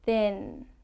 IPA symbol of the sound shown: n